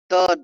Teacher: त द में दंतों पर रुकावट।